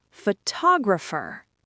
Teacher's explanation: Because the stress moved to the second syllable, that second O suddenly wakes up. It becomes a strong, clear vowel, tog. But look what happens to the first O.